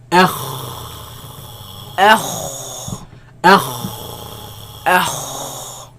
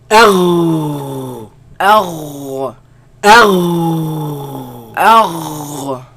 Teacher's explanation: They come from the top part of the throat, right? Where the root of the tongue raises against the uvula and produce the sound.